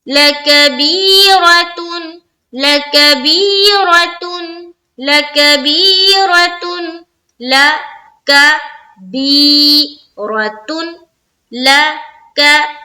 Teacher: بی میں ہم pressure ڈال رہے یعنی کہ کھینچ رہے ہیں. لا کو بھی جلدی پڑھا، کا کو بھی جلدی پڑھا، بی کو کھینچا، پھر را کو بھی جلدی پڑھا لیکن پر کرتے ہوئے، اور تا کو تا دو پیش تون ہے تو اسے بھی جلدی پڑھیں گے.